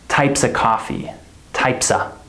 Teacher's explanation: We don't even say the F